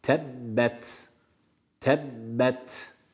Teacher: Tebbet kelimesi t'yi haddinden fazla sert bir şekilde okumuyoruz Hatta B'yi de Tebbet Tebbet bu kadar Tebbet yede geçiyoruz yede